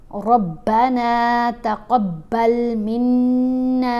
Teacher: गुन्ना यानी आवाज़ नाक में जाती है और 1 हरकत के बराबर ठहर कर पढ़ा जाता है। फिर यहाँ हरफ मद्दा है तो इसको 1 अलिफ के बराबर लंबा भी पढ़ना है। · नून के ऊपर ज़बर है, साथ अलिफ है तो ये हरफ मद्दा है, नून को 1 अलिफ जितना लंबा पढ़ेंगे